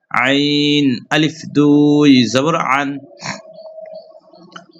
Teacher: আইন হরফ একটু হালকের মধ্যখান হইতে, অর্থাৎ কণ্ঠনালীর মধ্যখান হইতে আইন হরফ উচ্চারিত হয়